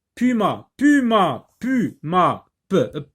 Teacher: les deux lèvres se rencontrent, donc c'est un son bilabial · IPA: [p]